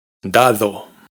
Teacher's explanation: Las dos d son distintas. Fijaos en que en la segunda d la lengua está entre los dientes.